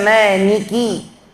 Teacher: Kalau kita baca Maniki, keluarkan lamnya dari hidung jadi nun. Yang betul itu Maliki.